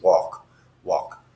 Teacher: you say walk but you don't really say the L with the tip of your tongue like you normally say an L it's not walk it's walk